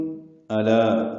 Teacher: حمزہ اقصى حلق سے بالجہر ادا کریں گے. لا الف متحد و حرکات لمبا ہے، لام باریک پڑھیں گے، الف مدہ بھی باریک ہے.